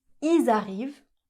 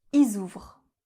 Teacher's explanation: à l'oral on va pas prononcer le L, on va pas prononcer le son L, mais, on va garder le S pour faire une liaison.